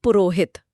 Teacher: गले के कंपन ने उस विसर्ग को ओ में बदल दिया और शब्द गढ़ा गया पुरोहित यह तो बहुत ही तार्किक है।